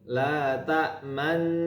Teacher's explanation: mensukunkan nun, dhammu syafatain, memonyongkan dua bibir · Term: Ishmam